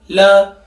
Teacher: समझना कि ल वर्ण का उच्चारण जैसे ही मैंने किया तो हमारी जो जीवा है वो ऊपर के दांतों के पिछले मसूड़ों को क्या कर रही है? स्पर्श कर रही है।